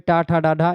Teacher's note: ये मूर्धा से बोली जाती हैं